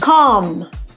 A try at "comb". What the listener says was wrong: It's not calm, we cannot use the short ah sound like hot and stop, calm. We have to use the long O sound like no and go. We pronounce this word comb. O. Make the long O sound. Comb. And remember, the B is silent. Don't pronounce the B. Comb.